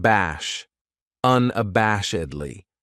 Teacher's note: This adverb has five syllables and the stress is on that third syllable